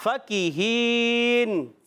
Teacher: کاف کا مخرج زبان کی جڑ اور تعلقہ سخت حصہ, زبان کی جڑ اور تعلقہ فَكِهِينَ.